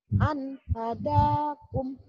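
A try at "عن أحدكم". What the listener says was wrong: Ya, an jangan tersentak banget, coba ulangin. An hadakum.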